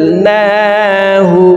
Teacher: এখানে ইকফাহ গুন্না, নুন সাকিনের পরে ইকফার হরফ যা আসছে, এই কারণে এই নুন সাকিনকে নাকের ভিতরে লুকাইয়া গুন্নার সহিত পড়ব।